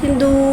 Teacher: दाल के ऊपर उल्टा पेश को एक अलिफ यानी 2 हरकत के बराबर खींच के पढ़ेंगे और उल्टे पेश को होठों की गुलाई के साथ अदा करके पढ़ेंगे।